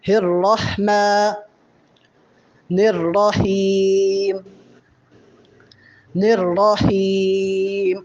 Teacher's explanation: را کے بعد ہا ہے، اور ہا حروف حلقی میں سے ہے، اس کی آواز بھی حلق سے پیدا ہوتی ہے